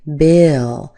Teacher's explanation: We put a little extra schwa in there, we get a little more length. That's because of the L at the end.